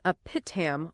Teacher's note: The api tam is run together. There's no space between the a and the p i tam.